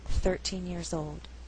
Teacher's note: So if I said I was 13 years old, stress is on the first syllable